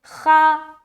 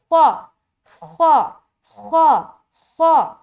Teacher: تو یہ حرف موٹا ادا نہیں ہوا. تو موٹے پن کی جو صفت ہے نا وہ ظاہر ہونی چاہیے، وہ جھلکنی چاہیے